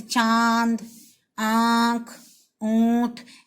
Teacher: जब हम चंद्र बिंदु को उच्चारण करते हैं तब हमारे नाक से आवाज आती है